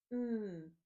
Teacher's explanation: this is a long, sustained sound we make by putting your lips together, for mouse, mm.